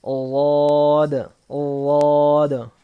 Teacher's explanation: اوپر کے داڑوں میں جب زبان کی کروٹ، بازو لگتا ہے تو واد ادا ہوتا ہے